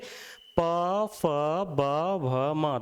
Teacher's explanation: दोनों होठ जुड़ जाते हैं इनके उच्चारण के लिए।